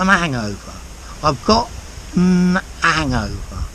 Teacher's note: He's dropping the H in hangover.